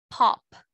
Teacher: this sound is without any vibration if you put your right hand on your throat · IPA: /p/